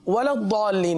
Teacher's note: दौद को पुर पढ़ेंगे, सही है, और इसको ज़्वाद नहीं पढ़ेंगे बिलखुसूस